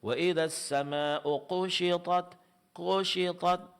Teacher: mengucapkan huruf kaf namun diucapkan mirip dengan huruf qf. Yaitu kafnya ditebalkan sehingga mirip dengan huruf q.